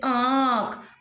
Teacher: आंख में देखो नाक और गले का। तो जब आप इसको पढ़ेंगे तो नाक पर और गले पर अपना हाथ रखेंगे तो दोनों में आपको वाइब्रेशन फील होगा और आप लगा देंगे चंद्र बिंदु। · अनुनासिक में आपका नाक का उच्चारण है मतलब नासिका का और आपका मुख का भी उच्चारण है तो नासिका और मुख का जो उच्चारण स्थान होगा वहां हम चंद्रबिंदु लगाते हैं जैसे आंख। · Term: अनुनासिक स्वर